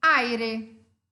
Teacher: duas vogais juntas uma fechada e uma aberta na mesma sílaba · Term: ditongo